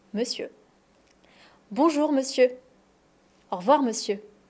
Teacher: En fait, c'est le même son E dans les deux syllabes. Monsieur. Et on ne prononce pas le R.